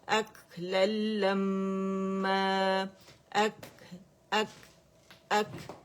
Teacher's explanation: اک للما, اک اک اک, کیونکہ اس میں شدہ ہے نا. جب آپ کہتے ہیں اک, آواز بند ہو گئی تو ہوا کا پریشر بہت زیادہ بڑھ گیا, اتنا بڑھ گیا کہ اس نے اس جو ہوا جو بند ہوئی تھی, آواز بند ہوئی تھی, اس کو کھولا اور پوری آواز بھی ہوا میں بدل گئی.